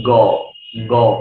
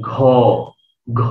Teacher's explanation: আপনি যদি বলেন গ গ, বাতাস পাবেন। আপনি যদি বলেন ঘ ঘ, বাতাস বেশি বের হবে। তো বাতাস যখন কম বের হয় তাকে বলি আমরা অল্প প্রাণ।